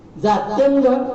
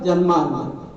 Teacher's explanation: तर म्हणजे एक उदाहरण सांगतो आपल्याला मी, जात्यंध जन्मान त्यातला जो ज आहे त्याचा उच्चार, त्याचा उच्चार वेगळा आहे. जात्यंध जाती शब्द आहे, ज दंत तालु ज, दाताला लागते जीभ. आणि जन्मांध ज मध्ये काय आहे ते तालव्य उच्चार. जन्मांध म्हणजे जरा आणि जरा ह्यात जो फरक आहे तोच फरक आहे.